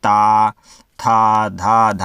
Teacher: भी स्वर है आप इसको देख लीजिएगा जिनका उच्चारण स्थान मतलब जिनका उच्चारण ऊपर के दांतों पर जीभ लगने से होता है